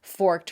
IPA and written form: fɔrkəd (forked)